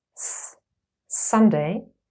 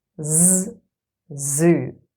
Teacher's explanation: here you can clearly hear and feel the difference between voiceless and voiced s and Z